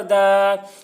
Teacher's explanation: فَہَا، دال کھڑا زبر دا، دال کے اوپر کھڑا زبر ہے، کھڑا زبر برابر ہوتا ہے الف مدہ کے، اس لیے کھڑا زبر کو 1 الف کے برابر کھینچ کر پڑھیں گے